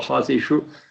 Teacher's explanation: hasishu shu is murdhanya